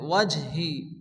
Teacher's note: জিম হচ্ছে কলকলার অক্ষর হালকা ধাক্কা দিয়ে পড়তে হবে